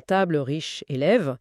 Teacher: Il y a le e en fin de mots qui est souvent muet